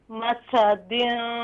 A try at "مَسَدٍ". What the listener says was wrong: اگر سیٹی جیسی آواز نہیں نکلے گی تو پھر سننے والا یہ سمجھے گا یہاں آپ ثا پڑھ رہی ہیں.